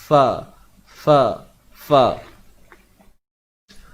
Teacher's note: makhraj huruf fa ini, datangnya daripada makhraj bibir. Tapi bukannya melibatkan 2 bibir, tetapi melibatkan bibir bawah sahaja. Yang mana dari sudut pendetilan dia, gigi atas akan kena pada bibir bawah. · Gigi atas, gigi belah atas ni, gigi kapak kita ni akan kena pada bahagian bibir bawah kita.